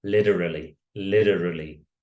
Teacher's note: so American English the t is more like a d